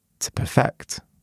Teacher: But when it's a verb, so to perfect something, it's the second syllable that's stressed.